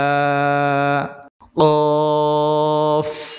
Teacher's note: কফ উচ্চারণ হবে জিহ্বার গোড়া তার বরাবর উপরে তালুর সাথে লাগবে, অর্থাৎ আলা জিহ্বা যেটাকে বলা হয় ওইখানে লাগিয়ে উচ্চারণ করতে হবে।